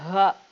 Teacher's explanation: இந்த சவுண்ட் எங்கேருந்து வருது? அடி தொண்டையில லாஸ்ட் எழுத்துலேருந்து வருது. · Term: ஹம்சா